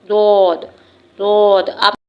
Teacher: جب زبان کے دونوں کروٹیں اوپر کے سائیڈ دانتوں سے لگتی ہیں تو حروف ضاد ادا ہوتا ہے